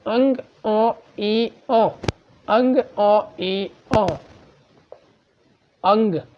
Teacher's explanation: आपके जो हवा है वो मुंह के साथ-साथ नाक से भी निकल रही है